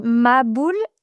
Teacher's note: Alors on n'a pas de H en français, on n'a pas le ha, on n'a pas le ha et donc on dit maboule.